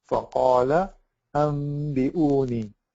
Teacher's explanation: Okay, so what we're doing basically is we're changing Nun Sakina or Tanween into a meme, but we are hiding the meme by closing our lips, and we are pronouncing the gunna, but we're not pronouncing the noon at all. There's no noon sound. There's only a meme sound, but it's a hidden meme sound, and it has tanween.